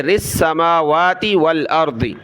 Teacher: را کو سین کے ساتھ ملائیں گے